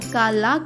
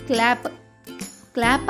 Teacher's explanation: C L యొక్క శబ్దం క ల కాకుండా క్ల అవుతుంది కాబట్టి సి ఎల్ ఏ యొక్క శబ్దం అవుతుంది క్లా సి ఎల్ ఏ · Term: సంయుక్త అక్షరం